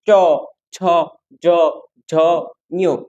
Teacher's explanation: চ, ছ, জ, ঝ, ঞ এগুলো তালু থেকে উচ্চারিত হয়। এজন্য এগুলো তালব্য ধ্বনি।